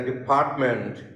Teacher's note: the middle syllable receives the stress and the initial and final syllable are unstressed but usually Bengali speaking even uh we teach us English teachers